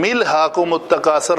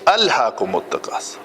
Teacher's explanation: اس حمزے کو ہم ملا نہیں سکتے، یہ کاٹنے والا ہے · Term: حمزہ قطعی